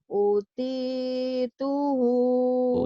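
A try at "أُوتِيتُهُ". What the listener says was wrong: U-nya panjang. Utituhu.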